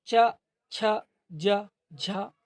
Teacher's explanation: जिन वर्णों के उच्चारण में जिह्वा का मध्य यानी बीच का भाग तालु से स्पर्श करता है उन्हें तालव्य वर्ण कहते हैं।